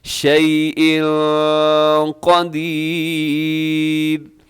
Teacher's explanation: قدیر سے پہلے ہاں شیء جو ہے یہاں پہ تنوین ہے، تنوین کے بعد قاف ہے تو یہاں پہ اخفا کریں گے